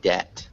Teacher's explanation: so you don't pronounce that b